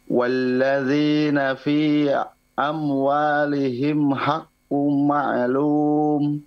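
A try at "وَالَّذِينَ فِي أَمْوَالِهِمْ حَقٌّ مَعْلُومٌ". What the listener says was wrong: Diperhatikan fi agak dipanjangkan, fi, kemudian haqqum agak ditahan dulu, haqqum.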